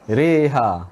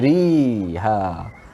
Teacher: Cara bacaan imalah dengan mencondongkan bacaan tu. Tidak bacaan ri tetapi re.